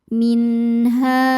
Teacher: Karena ada nun sukun bertemu huruf halqi atau huruf tenggorokan yaitu h. Maka nun sukun dibaca secara izhar atau jelas. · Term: izhar halqi